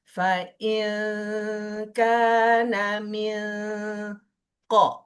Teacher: hurufnya suaranya hampir ke eng, hampir. Tapi jangan faing langsung, tapi hampir gitu. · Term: baca samar